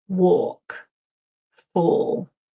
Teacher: walk and fall actually have the same vowel sound. It's that long or, walk, fall, like in four, or even the number four.